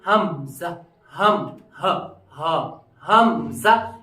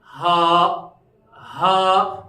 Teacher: تینوں حصوں کا آخری والا حصہ جو ہے سینے کی طرف والا حصہ ہے، یہاں سے ہمیں نکلے گا حمزہ اور ہا. جیسے ہم پڑھیں گے حمزہ، حمزہ، اسی طریقے سے پڑھیں گے ہم ہا.